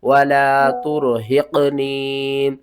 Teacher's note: یا ساکن سے پہلے زیر ہے تو اس کو ہم نے ایک الف کے برابر کھینچ کر پڑھنا ہے